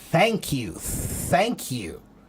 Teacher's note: That's the unvoiced TH sound. It doesn't have much sound, it's just air.